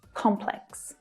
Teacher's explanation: in standard British English, there's just one way to pronounce this word, with the stress on the first syllable.